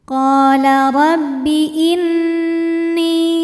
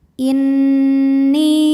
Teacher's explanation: Jadi bunyi n-nya tahan sampai ada suara masuk hidung kurang lebih 2 harokat. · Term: gunnah musyaddadah